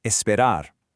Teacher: for words that end in R, like espar, you want to give that R a little more punch, a little trill if you can.